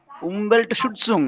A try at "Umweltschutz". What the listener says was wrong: Umweltschutz. Schutz. Ohne Ung. Schutz.